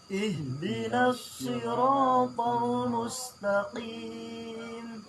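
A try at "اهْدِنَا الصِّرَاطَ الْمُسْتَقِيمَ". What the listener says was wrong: Agak takim bukan takim, tapi ada kopnya. Mustaqim, membedakan antara kop dengan kap tentunya harus beda. Kalau kap makhrajnya dekat lidah, kalau kop itu dekat lidah akan tetapi lebih dekat dengan tenggorokan. Ya, kap beda. Ihdinas siratal mustaqim.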